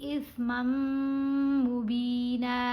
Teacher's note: میم کو میم سے ملاتے ہوئے غنہ کرنا ہے. با کو ایک الف کی مقدار جتنا لمبا کیا جائے گا.